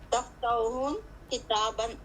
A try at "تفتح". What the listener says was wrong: حل تفتح, ہا کے اوپر کیا بتا رہے ہیں آپ, ہن بتا رہے ہیں یا ہو پڑھ رہے ہیں, پیش پڑھ رہے ہیں آپ؟ نہیں, دو پیش نہیں آئے گا, دو پہ ایک سنگل آئے گا, کیونکہ اسم جو ہوتا ہے, اسم کی علامت ہوتی ہے دو زبر دو پیش. ٹھیک ہے, یہ اسم نہیں ہے, یہ فعل ہے یہ. حل تفتحو کتابن.